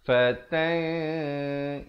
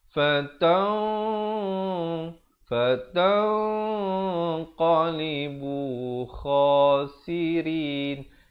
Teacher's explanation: Ikhfa hakiki di sini. Dan dibacakan dengan tebal kerana qafnya bersifat isti'la. Jangan baca fatang, itu tak betul.